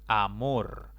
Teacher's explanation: amor es una palabra de dos sílabas la mayor intensidad está en la última sílaba · La mayor intensidad está en la última sílaba, contando siempre de izquierda a derecha. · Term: palabras agudas